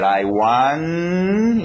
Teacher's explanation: eu não falei o T ainda, porque eu não sei qual vai ser a próxima palavra